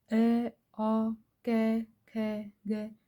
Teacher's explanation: मतलब अगर अपन अ आ ख ग इनको प्रोनाउंस करेंगे तो अपने सीधा मतलब जो कंठ है उससे आवाज आएगी